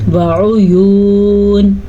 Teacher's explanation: وعیون، اسے کھینچ کے پڑھیں گے کیونکہ واو ساکن سے پہلے پیش ہے تو یہ واو مدہ ہے